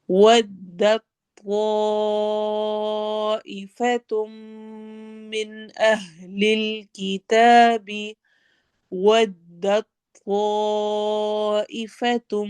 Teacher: इसमें ता नहीं पढ़ा जाएगा, दाल डायरेक्ट त्वा से मिलेगा